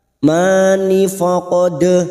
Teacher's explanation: dal sukun qalqalah sugroh yang mati asli di tengah kalimat jangan lupa dipantulkan